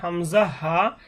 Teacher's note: কণ্ঠনালীর শুরু হইতে উচ্চারণ হবে হামজা হা, এবং মধ্যখান হইতে, অর্থাৎ গলায় একটু চাপি উচ্চারণ হবে। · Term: হলকের শুরু